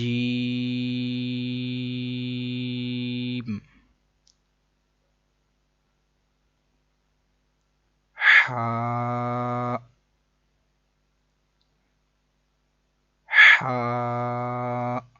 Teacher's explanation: یہ ہا حلق کے درمیان والے حصے سے ادا ہوتا ہے